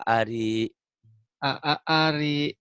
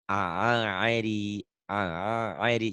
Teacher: Sekarang pakai ain kayak orang keselak.